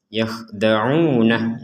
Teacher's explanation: mat tabi'i, yaitu mat yang panjangnya dua harokat.